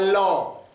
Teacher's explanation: पार्श्विक माने होता है बगल से, मुख के बगल से निकले प्रयत्न के आधार पर, तो ये पार्श्विक कहलाता है।